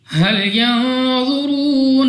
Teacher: را کے اوپر پیش، را کو بھی موٹا یعنی پر پڑھنا ہے۔ واو ساکن سے پہلے پیش واو مدہ ہے، 2 سیکنڈ تک کھینچ کر لمبا کر کے پڑھیں گے۔